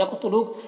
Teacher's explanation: او میں واو لین ہے، اسے نرم آواز کے ساتھ جلد پڑھیں گے۔ یقتلو، قاف حروف مستعلیہ میں سے پر پڑھیں گے اور قاف حروف قلقلہ میں سے ہے، قاف میں قلقلہ بھی کریں گے۔